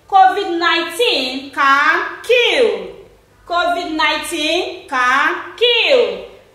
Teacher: If you look at this particular sentence, you will discover that this first word here, COVID-19, is a noun, so it is stressed. Can is not stressed, kill is what? Stressed.